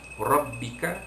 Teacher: Rabbika, jadi ra itu dibaca tebal, yakni tafkhim.